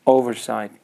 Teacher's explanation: the first syllable should be a stress